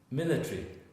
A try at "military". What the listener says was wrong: Because you wanted to say 4. It's a Spanish disease to add